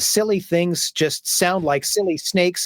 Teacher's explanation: There are many people, myself included, that sometimes when we say those S's, the silly things just sound like silly snakes, and the S will go really hissy and shrill. That's called sibilance.